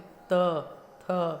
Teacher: तवर्ग में त, थ, जो जीवा है वो आगे वाले दांतों को स्पर्श करती है, देखिए ऊपर के दांतों को स्पर्श करती है